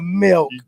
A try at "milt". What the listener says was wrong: No, milk with a T.